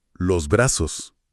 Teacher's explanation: Hablan de la aspiración de la S al final de las palabras. Por ejemplo, en vez de los brazos suena como los brazos.